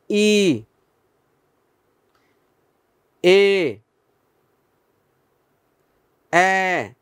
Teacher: মৌলিক স্বরধ্বনি প্রথম যে 3টি সম্মুখ স্বরধ্বনি ছিল ই, এ, এ